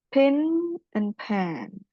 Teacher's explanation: I sama e-nya ikut nasalized. And it is represented with a small diagretic above the vowels.